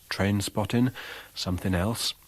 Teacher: in popular accents the ing suffix is pronounced with an alveolar nasal